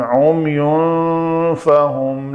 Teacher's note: نون ساکن کے بعد فا ہے تو یہاں پہ اخفا کریں گے